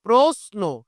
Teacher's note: এই তালব্যস এর সাথে দন্ত ন পেয়ে গেছি আমি তার মানে এ শব্দটার উচ্চারণ কিন্তু এই তালব্যসটার উচ্চারণ করতে হবে দন্তস